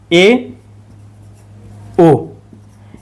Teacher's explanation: आधा मुख लगभग में बंद रहता है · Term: संवृत